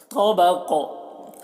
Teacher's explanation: قاف کو بھی موٹا کر کے، اور قاف میں قلقلہ ہو رہا ہے